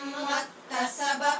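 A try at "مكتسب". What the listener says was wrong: اس کو آپ نے مکتسبہ نہیں پڑھنا، ٹھیک ہے، مکتسب، مکتسب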